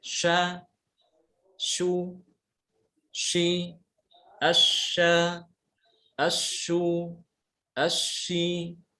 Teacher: mengucapkan shin itu disertai dengan aliran nafas ya, hembusan nafas. Dan juga suaranya dia itu tidak tertahan seperti jim. Kalau jim kan tertahan, ya, tertahan. · makhraj jim sama shin itu sebenarnya sama. Ya, sama-sama dari tengah lidah dengan langit-langit mulut bagian atas. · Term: huruf shin